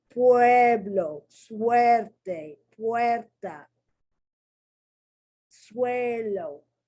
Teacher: That UE is forming one sound. It's a diphthong.